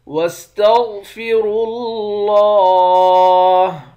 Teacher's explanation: وَاسْتَغْفِرُوا اللَّهَ، غین اور را ان دونوں حرف کو موٹا پڑھیں گے، را کو لفظ اللہ کے لام کے ساتھ ملا کر لفظ اللہ کے لام کو موٹا پڑھیں گے